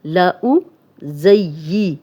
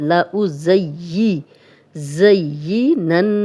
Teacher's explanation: ज़ा सीटी वाला है और या जो है 2 दफ़ा पढ़ा जाएगा, 1 दफ़ा ज़ा की ज़बर के साथ, 1 दफ़ा अपनी ज़ेर के साथ। लउज़य्यी, ज़य्यिनन्न, नन्न, नून पे शद है, तो जब भी नून पे शद हो तो गुन्ना किया जाता है।